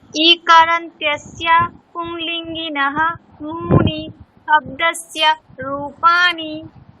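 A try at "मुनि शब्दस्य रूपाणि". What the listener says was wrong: মুনিতে কিন্তু টান হবে না, মুনি মুটা কিন্তু হ্রস্ব উ আছে, আর নিটাও হ্রস্ব উ, তাহলে মুনি শব্দস্য।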